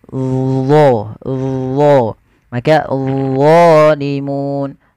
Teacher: dia mirip dengan zal, tapi pangkal lidahnya terangkat. Dan dia punya sifat namanya idbaq, melekat ke langit-langit lidah kita.